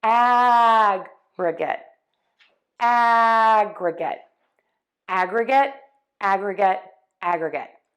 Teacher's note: The key is it just needs to be shorter, softer, and lower in pitch. In this word, in the noun or the adjective, we are going to stress syllable 1. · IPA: ˈæɡrɪɡɪt